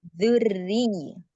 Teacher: Setelah dhammah sempurna baru ke ro tipis.